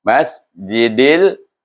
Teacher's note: Masjidil, izhar, tidak panjang dan tidak berdengung